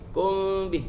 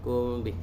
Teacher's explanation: Mim mati bertemu dengan ba ni dia jadi ikhfa. Ni kita sembunyikan.